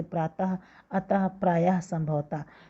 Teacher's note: विसर्ग के उच्चारण में ह की ध्वनि निकलती है